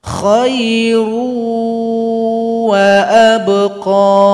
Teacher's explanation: Contoh kedua, tanwin, kita ambil dhammatain berjumpa dengan waw tasydid, maka yang tanwin ini juga dilebur atau digabung kepada waw, sehingganya waw juga didengungkan